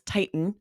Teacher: glottal stop, the T. Most people don't pronounce that Titan.